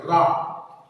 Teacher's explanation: जिस वर्ण को बोलने में जीभ ऊपर उठकर लुढ़क कर नीचे आती है, उस वर्ण को लुंठित वर्ण कहते हैं, और रा एक लुंठित वर्ण है।